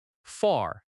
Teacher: Far has a strong R sound in American English.